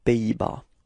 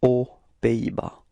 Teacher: So no link, no liaison between the words, so it's aux Pays-Bas.